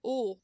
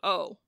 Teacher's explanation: That O, when we make fun of people from Minnesota, is just the same O that we would say, but higher. Ooh, instead of O. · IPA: [o:]